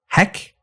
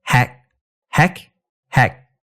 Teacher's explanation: the vowels are pretty much the same in English and Cantonese if anything your tongue goes up just a tad in Cantonese in the direction of e